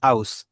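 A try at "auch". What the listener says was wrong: এটাকে আউচ না বলে আউখ, খ।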